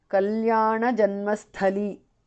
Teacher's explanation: The tha is mahapranah.